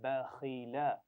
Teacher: खा की आवाज मोटी है, बा और लाम तो बारीक पढ़े जाते हैं।